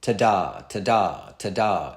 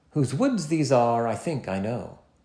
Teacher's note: single unstressed syllables followed by single stressed syllables